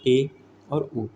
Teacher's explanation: करते हैं अर्ध समृत स्वर की ठीक है इसमें क्या है मुख आधा बंद होता है